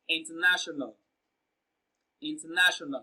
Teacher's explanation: The third syllable na receives the stress in international. · So when you pronounce international, you can hear that na is pronounced louder and longer.